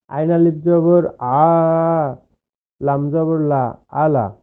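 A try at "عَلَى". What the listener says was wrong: টানলেন, আবার পড়ার সময় টানলেন না কেন?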